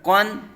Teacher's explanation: قاف حروف مستعلیہ میں سے ہے، اس کو پر پڑھیں گے یعنی موٹا کر کے پڑھیں گے۔